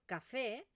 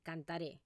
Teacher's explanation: esta E se pronuncia con una E un poco, con la boca un poco más abierta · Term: vocal uberta